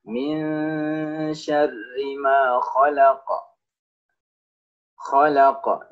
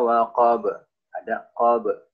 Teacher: ingat setiap qaf yang dia disukunkan atau ketika dia sukun apalagi dia di akhir ayat seperti ini maka dia menjadi sukun maka ingat jangan lupa diberikan pantulan suara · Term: huruf qalqalah